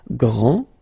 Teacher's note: This final D is not pronounced. Okay, so grand, and then the feminine form, grande.